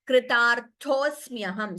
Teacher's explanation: Swamin kritarthosmyaham. Here, the first ta is Alpaprana. Second is Mahaprana tha. Kritarthosmyaham.